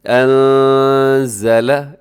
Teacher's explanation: یہاں نون ساکن ہے، نون ساکن کے بعد زا ہے۔ اب یہاں پر اخفا کیجیے گا